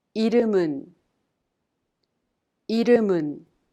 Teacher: The final consonant M in the second syllable 름 of 이름은 is prolonged to the next syllable 은, so we pronounce it 문.